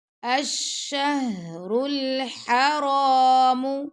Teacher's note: حرام کی جو ہا ہے یہ گلے کے درمیان سے اس کی آواز آتی ہے. آپ دونوں کو دیکھیں پڑھتے وقت ان کا آپس میں ڈیفرنٹ آواز ہے ان دونوں کی.